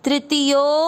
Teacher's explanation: यो की मात्रा को लंबा खींचते हो। तृतीयो और खींचते हुए आधे ध को या के साथ पढ़ना है तृतीयोध्या, और य में अ मिक्स करना है तृतीयोध्याय।